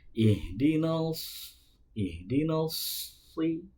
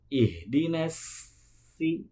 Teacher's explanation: dari ujung lidah bertemu dengan ujung gigi seri bawah, pangkal lidahnya itu terangkat.